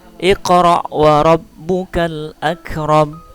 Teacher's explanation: qalqalah sugro karena huruf qalqalahnya mati di tengah